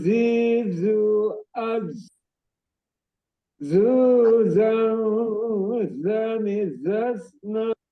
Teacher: Ujung lidah posisinya bertemu dengan ujung gigi seri bawah atau yang mendekatin lah. Zai sejajar dengan ujung gigi seri bawah sama dengan sod ya.